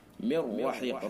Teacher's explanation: نون ساکن کے بعد لام را میں سے را ہے، لہذا ادغام تام بلا غنہ ہوگا. من رحیق، را چور کے را کے اوپر زبر اس لیے را کو پر کر کے پڑھیں گے.